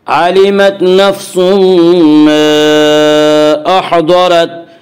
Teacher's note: ता यहाँ पहले से साकिन है, इसलिए यहाँ पे वक्फ बिस्सुकून होगा। और अहज़रत की रा को पुर पढ़ा जाएगा। इसका कायदा यह है कि रा के ऊपर ज़बर और पेश हो तो रा को पुर पढ़ा जाएगा, रा के नीचे ज़ेर हो तो रा को बारीक पढ़ा जाएगा, या रा के ऊपर ज़बर इसलिए रा को पुर पढ़ेंगे।